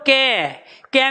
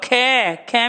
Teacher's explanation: कै में वायु लग रही है कम, अब खे में लग रही है ज्यादा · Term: अल्प प्राण